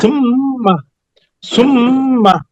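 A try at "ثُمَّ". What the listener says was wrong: না, আপনার এটা উচ্চারণ ঠিক আছে অনেকটা, কিন্তু উচ্চারণের জায়গা ঠিক নাই। যেভাবে উচ্চারণ করতেছেন ঠোঁট থেকে দুই ঠোঁট একত্রিত করে এভাবে হবে না। আমার দিকে একটু তাকান, আমার দিকে খেয়াল করেন কি হয়। যে তিনটা নরম করতে হবে, সা জাল জোয়া, ওই তিনটা উচ্চারণ হবে এই জায়গা থেকে, এই যে জিহ্বা জিহ্বা।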